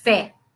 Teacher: olha a força da palavra pé o é é aberto